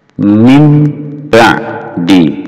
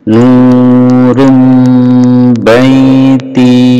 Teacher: Kalau ada nun sukun bertemu dengan ba atau tanwin an in un bertemu dengan ba, maka nun sukun dan tanwin ini berubah menjadi mim, atau dalam bahasa tajwidnya disebut bacaan iqrab.